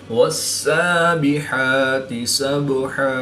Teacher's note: बा साकिन है, तो यहाँ पर हम क़लक़ला सुग़रा करके पढ़ेंगे।